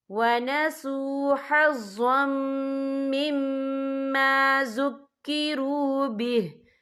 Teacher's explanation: ज़ा के ऊपर तनवीन है, तनवीन के बाद जो है मीम आ रहा है और मीम जो है रूफ़े यरमलून में से है, तो यहाँ पर इदग़ाम होगा, तो हम इसे गुन्ने के साथ पढ़ेंगे।